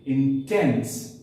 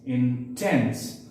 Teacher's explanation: So these 2 syllables will have a similar sound, okay? The first one will be unstressed, a shorter sound, and the second one, which follows the first one, will have a more louder sound, will be stressed.